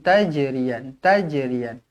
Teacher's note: Jim qalqalah sughra baca melantun.